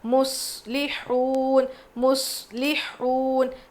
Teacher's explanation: صاد پہ جزم ہے، دبا کے پڑھنا ہے، اور یہاں پہ قلقلہ بالکل نہیں کریں گے، صاد کی آواز کلیئر ہونی چاہیے۔